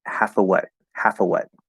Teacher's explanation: most of the time we drop that the v sound which is written as an f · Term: schwa